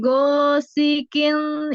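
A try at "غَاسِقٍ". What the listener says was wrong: bukan go. Jadi beda ya pengucapan huruf G Indonesia dengan Arab ya. Nah, kalau G Indonesia di lidah ya go gitu ya, di lidah go di tengah. Nah, sedangkan huruf go ini di tenggorokan, tenggorokan bagian atas.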